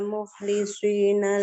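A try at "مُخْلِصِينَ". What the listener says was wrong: Nah, bukan mukhlisi, jadi shin. Mukhlisina di bawah lidahnya. Bukan shi, itu huruf shin. nah, fokusnya di ujung lidah. Nah, di ujung lidah sama tempat keluar, sama lidahnya posisinya kayak ibu ngucapin huruf sin. Kalau tadi kedengeran banget mukhlisi, dari kayak shin banget tadi.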